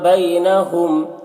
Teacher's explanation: میم ساکن کے بعد سا ہے، میم میں اظہار شفوی ہوگا۔ میم کو ظاہر کر کے پڑھیں گے، جیسے ہم تم کی میم کو پڑھتے ہیں۔